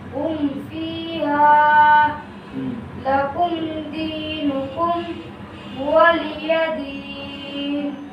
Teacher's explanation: اظہار شفوی کا یہ قاعدہ ہے کہ کہ جب میم ساکن کے بعد دوسری میم اور با کے علاوہ باقی حرفوں میں سے کوئی حرف آ جائے تو وہاں پر میم ساکن کا اظہار ہوگا، یعنی جلد پڑھا جائے گا، نہ کھینچے گا، نہ غنہ ہوگا